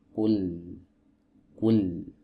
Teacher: Nah, lam ini adalah huruf yang keluar dari sisi lidah atau tepi lidah bagian depan. Dari sini sampai ke depan sini, ini yang diistilahkan oleh para ulama ahli tajwid dengan istilah muntahal hafah, ya, penghabisan tepi. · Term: huruf lam